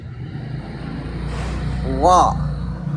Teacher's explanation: Ro itu di sini digusi. Tempel lidahnya langsung digusi.